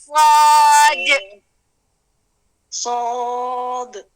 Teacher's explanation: زبان کو بالکل تالو پہ چپکا دینا ہے اور بچھا دینا ہے